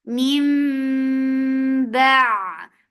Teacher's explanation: in iqlab, you change the sound of noon into mim, and you keep the sound in your nose for a longer time, and this is called gunna.